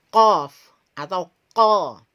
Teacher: Pangkal lisan ini terangkat ke langit-langit. Ya, pangkal lisan ini terangkat sampai pada langit-langit · Jadi huruf itu berasal dari sini atau mahrojil huruf atau tempat keluarnya huruf berasal di pangkal lidah kita yang paling ya. Pangkal yang paling belakang dan ditempelkan di langit-langit yang paling lunak. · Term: huruf qaf